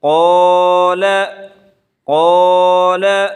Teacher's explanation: ایک الف کے برابر کھینچ کر پڑھیں گے